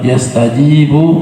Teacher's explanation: kalimat yastajibu mad tabi'i, dua-duanya mad tabi'i, ji panjang, bu juga panjang, mad tabi'i 2 harokat.